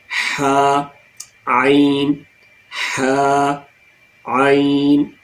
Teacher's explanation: हमारे थ्रॉट का सेंटर है, जो हमारे हल्क का दरमियाना पॉइंट है, वहाँ से 2 लेटर्स निकलते हैं